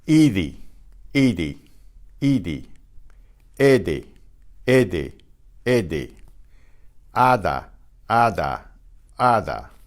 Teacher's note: Well, that's kind of a description. The result is very similar to the TH of the English father. The tongue touches the upper teeth. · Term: DTH sound